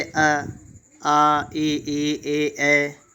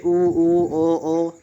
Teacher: तो आप इनको कह के देखेंगे तो आपका मुंह गोल हो जाएगा तो इन्हें कहते हैं वृत्त मुखी